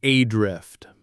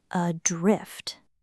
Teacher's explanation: Right, the stress falls on the second syllable, adrift. The first syllable is very light, almost swallowed. Adrift. Adrift, like the weight of the word is in the drift part, which actually makes sense given what it means.